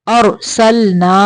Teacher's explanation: را کو موٹا پڑھیں گے ساکن کرتے ہوئے